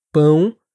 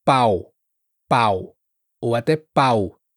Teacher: Bom, hum, todas essas palavras t uma vibração que acontece aqui, ó, perto do nariz. E muitos falantes em inglês acabam pronunciando esses sons eh de forma mais oral, sem essa nasalização.